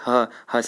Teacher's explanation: वाले स का होता है वर्त से यानी दंत मूल से ह का होता है कंठ के भीतर से